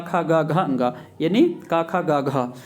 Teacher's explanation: है हम जानते हैं कि अकु विसर्जन नाम कंठ आ और क वर्ग पूरा जो होता है वो कंठ से बोला जाता है